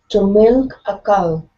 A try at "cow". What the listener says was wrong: Okay, so here you're saying cow. Instead of cow, push the sound forward in your mouth.